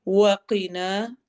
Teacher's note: وقنا قاف کو موٹا پڑھنا ہے، الف مدہ کرنا ہے نا پر،